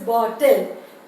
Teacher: The tip of the tongue is constant, just touching touching firmly in the teeth ridge. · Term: lateral plosive